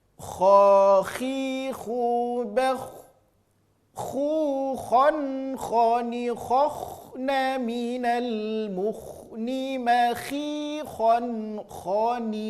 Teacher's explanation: Hurufnya keluar dari ujung tenggorokan. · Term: huruf kho